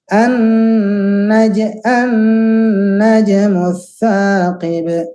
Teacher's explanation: Nah, alasannya adalah karena 2 tempat keluarnya. Nun dan mim itu selain untuk nun dari lidah juga masuk hidung. Mim selain dari bibir juga masuk hidung. Jadi 2 tempat. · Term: nun tasydid